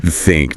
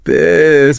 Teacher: Tongue tip between the teeth for both. Add the voice for the second one.